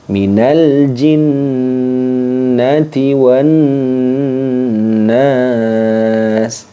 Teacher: Jadi harus seimbang panjangnya antara jinnati nun tasydid yang pertama dengan nun tasydid yang kedua.